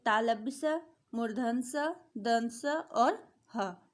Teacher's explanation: इस श्रेणी के व्यंजनों का उच्चारण घर्षण से उत्पन्न होता है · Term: ऊष्म व्यंजन